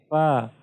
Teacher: तो फा की अदायगी में आपने नोट किया होगा कि जब आप फा अदा करते हैं तो सनाया उलिया यानी ऊपर 2 दांत नीचे होंठ पर लगते हैं, तो इससे फा अदा होता है